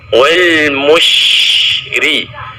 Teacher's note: mush pada huruf shin juga dialirkan secara penuh